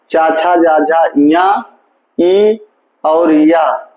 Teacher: ये तालू से बोले जाते हैं